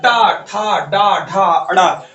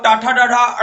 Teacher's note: आपकी जीभ जो होती है वो देखिए पलट के कहा जाती है, मूर्धा की तरफ।